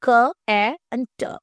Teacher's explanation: the C sound in cat is made by blocking air flow at the back of your throat and then releasing it. a process called a weller stop.